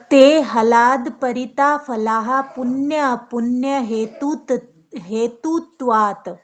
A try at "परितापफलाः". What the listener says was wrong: यहाँ पे ना आपका पा भी आएगा, ठीक है, ये परिताप है यहाँ पे, तभी मैंने कहा यहाँ पे कुछ गड़बड़ है।